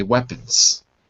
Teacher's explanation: you can kind of swallow the last syllable and therefore you don't need to voice it so it kind of makes sense anyway according to the rules